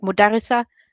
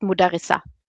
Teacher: there's actually a t in the in the word but you don't hear it. It's just mudarisa.